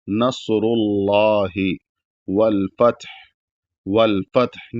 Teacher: जब रुकेंगे तो हा भी साकिन हो जाएगा